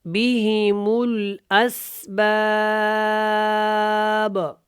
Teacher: یہاں پہ با کے اوپر ہم نے قلقلہ کرنا ہے کیونکہ با حروف قلقلہ میں سے ہے